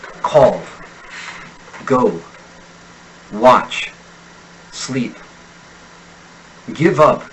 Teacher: the use of the imperative tense triggers the stress syllable to descend in Pitch · Americans tend to descend in pitch on stress syllables and they tend to stress certain verbs when giving instructions and offering suggestions